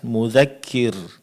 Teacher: Ketika berhenti mudzakir, ra di sini mestinya ditipiskan